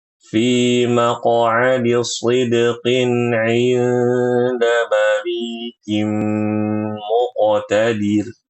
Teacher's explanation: muqotadir itu pendek ya